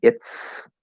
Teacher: we're going to change that Z sound into an S because we're pushing that voiceless T, pushing the S to the voiceless T.